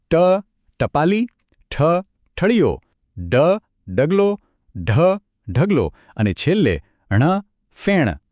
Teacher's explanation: આને બોલવા માટે જીભને થોડી વાળીને તાળવાના ઉપરના ભાગને અડાડવી પડે છે. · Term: મૂર્ધન્ય ધ્વનિ